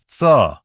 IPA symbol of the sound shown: θ